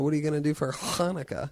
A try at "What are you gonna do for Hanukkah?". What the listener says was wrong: If you said it like that, no, you accentuated too much. You're calling too much attention to your pronunciation. Hey, what are you guys going to do for Hanukkah? I even accentuated a little bit there. What are you guys going to do for Hanukkah?